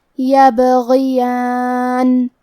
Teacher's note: غین کے نیچے زیر ہے تو ہمیں زیر کو ظاہر کرنا ہے اور ہم غین کو موٹی آواز میں پڑھیں گے